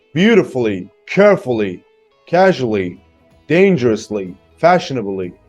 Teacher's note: right look beautifully carefully casually dangerously fashionably incredibly perfectly politely unhealthily so most of them are stressed on the first syllable